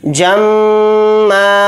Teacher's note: मीम के ऊपर तशदीद है तो मीम के अंदर गुन्ना भी करेंगे, गुन्ना इस तरह से होगा जम्मा।